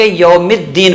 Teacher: جب حروف شمسیہ میں سے آتے ہیں تو لام چھپ جاتا ہے